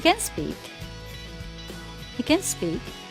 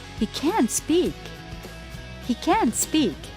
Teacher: We don't stress the auxiliary when it is positive, but we stress it when it is negative.